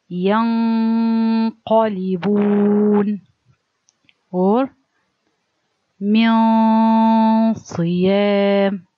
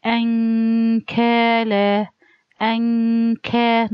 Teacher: The qaf very deep. From the deepest part of the tongue, so I have to do it there in the place of qaf with heaviness. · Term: heavy